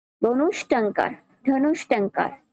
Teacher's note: মূর্ধন্য স থাকার কারণে এর ধ্বনিটা হবে বিসর্গ ধ্বনির মতো। যুক্ত বর্ণটির পাশে একটু খেয়াল করি, ধনু বিসর্গ যোগ টঙ্কার, ধনু বিসর্গ যোগ টঙ্কার।